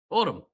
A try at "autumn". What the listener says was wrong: Why are you putting so much? Why are you putting so much emphasis on the O?